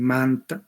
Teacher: como estás en un contexto de sonidos nasales, la vocal se nasaliza